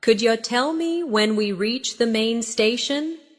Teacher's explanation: Could you tell me when we reach the main station? Notice how could you becomes could ya.